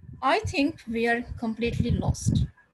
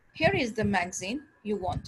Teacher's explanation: the first is high and then it continued to fall until the end of the sentence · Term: falling intonation